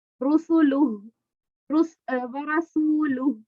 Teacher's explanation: ورسو کو کیوں میں نے کھینچا، یہ ادھر واو مدہ ہے